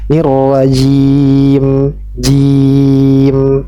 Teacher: Kita ambil pertengahan, kita baca dengan 4 harokat. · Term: mad arid lis sukun